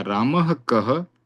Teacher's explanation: रामः का विसर्ग का ह और आगे आने वाले क की ध्वनि दोनों जुड़ी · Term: जिहवा मूल्य क